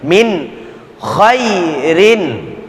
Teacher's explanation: karena dia adalah izhar maka jelas dibaca nun sukun